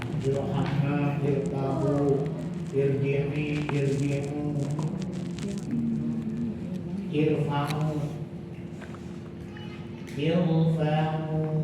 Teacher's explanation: Dan semuanya nggak ada yang baca tipis ya, di ir. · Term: tebal